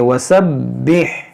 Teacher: यहाँ पर देखें वसब्बिह, बा पर तशदीद है, इसको खूब जमाव के साथ पढ़ेंगे